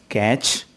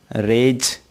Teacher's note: एक साउंड और होती है जिसे सिबिलेंट साउंड कहा जाता है। हिंदी में से, चे और जे वर्ण वाली ध्वनियाँ अंग्रेजी में सिबिलेंट साउंड कहलाती हैं। यानी अंग्रेजी में जिस अक्षर की ध्वनि से, चे और जे निकलती है वह सिबिलेंट साउंड कहलाती है।